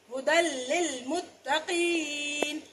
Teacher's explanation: اسی طرح سے ہا پیش ہو دال دو زبر دن، یہ یا تو ویسے ہی خالی حرف نہیں پڑھا جائے گا، آخری حرف یہاں پہ دو زبر والا ہے، نون تنوین کا ہے، اور دال کی دو زبر جو ہے لام سے ملے گی. دال دو زبر لام دل، ہدل لام زیر لام ہدل للمتقین. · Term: ادغام کبیر بغیر غنہ